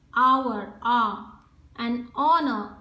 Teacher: H is silent, and therefore there is this sound of O, vowel sound coming. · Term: vowel sounds